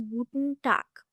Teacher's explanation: It is not guten Tag, it is guten Tag, because in German, when any words ends with G, or when G comes at the end of any word, it will go a bit k sound